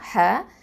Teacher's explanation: அடுத்தது ஹ, இந்த ஹ வந்து நடுத்தொண்டையிலேருந்து வரணும், வசத்தல் ஹல்க்கு